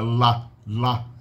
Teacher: E o Lá, que é uma lateral, é com a parte lateral da língua. A gente obstrui o som usando meio que o lado da língua encostando na parte mais lateral do céu da boca de cada lado